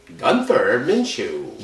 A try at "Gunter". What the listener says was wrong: Gunter? It's Gunter, not Gunther. It's Gunter.